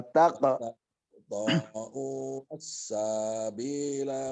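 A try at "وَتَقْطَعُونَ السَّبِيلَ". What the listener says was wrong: Sa-nya nggak panjang. Sa-nya tidak panjang. Wataqta'unas sabi di situ. Sabi bi-nya yang panjang, sa-nya tidak. Sa-nya jangan ragu-ragu, langsung itu di depannya huruf bi. Sabi, sabil, fisabilillah.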